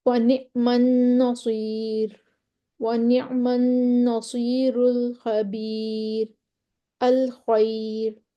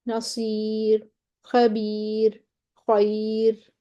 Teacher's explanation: یہ ساری را جو ہیں وہ باریک ہیں